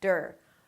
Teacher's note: And then we end it up with "der" "der" "der" - a D sound, schwa R, which is technically D-R